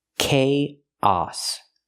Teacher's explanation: Use the k sound like cake, plus the long A, K, and then the ah sound like hot and stop.